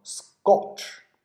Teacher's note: ，刚才我们见到了叫甜的形容词▁，orange，▁橙子、橘子▁，OK。好，那跟我们一起读，叫做▁I▁don't▁like▁sweet▁orange，▁我不喜欢甜橙子。What▁is▁she▁doing?▁She▁is▁eating▁that▁sweet▁orange。▁好，她正在吃啊▁be▁doing，▁我们31课学的。▁Next▁one，▁注意这要浊化，叫做▁scotch，▁对吧？ 首音是▁s，▁第二个音是清辅音，把它浊化成对应的浊辅音